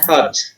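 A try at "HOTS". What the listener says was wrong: Pakai S di belakangnya.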